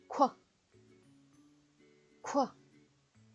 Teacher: Q의 기본 음가는 쿼인데요. Q는 입술을 동그랗게 내민 상태에서 쿼 소리를 내시면 되는데요. Q 다음에는 항상 U가 오기 때문에 Q와 U는 합쳐서 쿼 하고 소리를 내시면 됩니다.